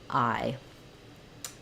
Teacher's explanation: examples of how we um we spell the I diphthong so I is a diphthong which means a vowel that I make by gliding between two positions it's not two separate sounds it's not ah and if it's